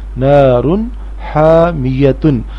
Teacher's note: تنوین یعنی دو پیش کے بعد ہا یعنی حروف حلقی ہے، اس لیے تنوین کی آواز ناک میں سے نہیں آئے گی